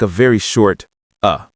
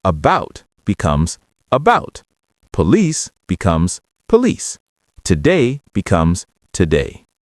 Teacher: In natural speech, many vowels in unstressed syllables get reduced to a very short neutral sound called the schwa